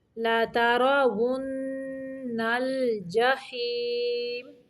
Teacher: واو کی ادائیگی کے وقت ہونٹوں کو گول رکھنا ہے، دانتوں کا استعمال نہیں کرنا